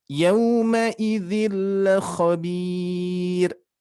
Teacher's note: Di sini ro-nya ditipiskan karena madnya dia kasroh ya.